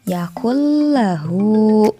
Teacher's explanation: dari huruf kafnya ini langsung ditekan ke huruf lam.